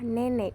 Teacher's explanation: vokal e Tengah bawah depan tak bundar